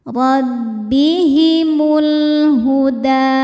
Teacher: Rbihimul alif lamnya namanya alif lam qamariah. Karena alif lam menghadapi huruf qamariah yaitu ha. Maka lam dibaca jelas